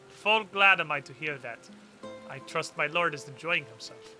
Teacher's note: she doesn't have the trilled R's. She just says them flat. She just has the accent.